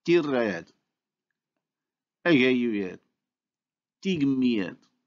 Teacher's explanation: the native speaker proceeds to the insertion of a glide to separate the two vowels, and so these are pronounced tirayed, agayuyed, tigmiyed.